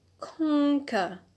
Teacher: on the last syllable we have a schwa